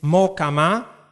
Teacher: The vowel is pronounced in a long way because h disappears, or it's pronounced in a short way, mahkama, and the ha may also be heard.